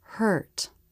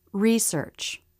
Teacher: there was much more jaw drop for the stressed version of this vowel